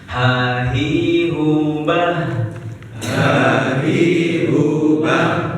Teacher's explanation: Makhraj hurufnya ha. Tenggorokan bawah. Bagian bawah. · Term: huruf ha